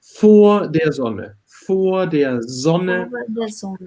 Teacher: It's more like there is no R in the end.